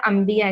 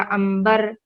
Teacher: नून लिखा जाएगा लेकिन साउंड आएगा मीम का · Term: इक़लाब